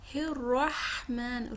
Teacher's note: را کے اوپر تشدید ہے، فتحہ ہے، را کو مفخم ادا کریں گے